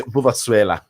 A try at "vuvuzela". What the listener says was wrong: No, it's not swella. Vuvuzela. Vuvuzela.